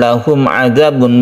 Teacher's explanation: mim mati bertemu dengan ain izhar syafawi tidak berdengung